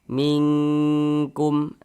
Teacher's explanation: Jadi kita dengungkan di bagian mingnya itu kita tahan, kita panjangkan sejenak. · Sehingga dia kalau ikhfa hakiki abad itu biasanya ketika mengucapkannya itu dia lebih condong berbunyi eng. Jadi bunyi nun sukunnya itu kita samarkan ya. Kalau ikhfa itu kita samarkan cara bacanya.